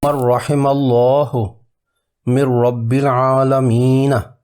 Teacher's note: اب ادغام تام کی مثال حرف را پر، یہ بھی مکمل ادغام ہوگا اور نون ساکن اور تنوین کی آواز را میں مدغم ہو جائے گی